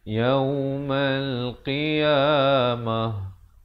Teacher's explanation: ta marbutah bila sahabat-sahabat waqaf ditukarkan kepada ha. Kalau nak wasal jadi kekal ta ya.